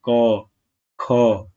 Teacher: होगी आप खुद बोल के देख सकते हैं जैसे की ख जब आप ख बोलते हैं तो आपके जो मुख से हवा निकलती है आपकी हथेली पर बहुत तेजी से टकराती है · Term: महाप्राण